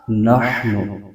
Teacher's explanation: ہا کو حلق کے درمیانی حصے سے ادا کرنا ہے